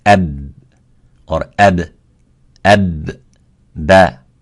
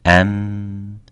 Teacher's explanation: the ba has a strength of shidda, and the sound stops there